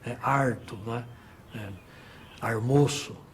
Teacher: o famoso R retroflexo, que é típico da área caipira